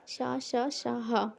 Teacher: ये वे व्यंजन है जिनका उच्चारण में विशेष रूप से श्वास का घर्षण होता है। वस्तुतः जीभ तथा होठों के निकट आने के कारण उच्चारण में वायु रगड़ खाती हुई बाहर निकल जाती है। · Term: ऊष्मीय संघर्षी व्यंजन